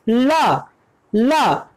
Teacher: ल को बोलने के लिए हमारी जो जीभ है वो पीछे की तरफ मुड़ती है। ल जीभ को ऊपर से उठाकर पीछे की तरफ मूव कर रहे हैं, तब जाके ल को बोल पा रहे हैं। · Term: पार्श्विक